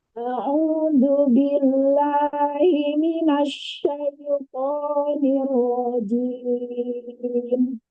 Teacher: Hamzah harus dibuka sedikit, tahkik, ditekan. A au tapi masih agak tegang.